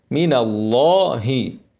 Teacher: بعدها اسم الجلاله اللام مفخمه